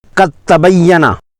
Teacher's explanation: اگر دال ساکن کے بعد تا آئے یا تا ساکن کے بعد دال یا تا آئے تو دوسرے حرف کو ہی پڑھا جاتا ہے جو کہ مشدد ہوتا ہے۔ قد تبینہ، اس میں دال نہیں پڑھی جائے گی بلکہ تا پڑھا جائے گا، دال کو تال میں مدغم دیا گیا۔ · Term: ادغام متجانسین